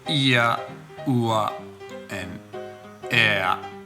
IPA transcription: ɪə ʊə eə